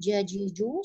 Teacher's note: sempurnakan makhraj jim di tengah lidah nempel di langit-langit atas